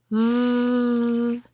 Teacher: bite your lip and use that voiced sound we are talking about and say v.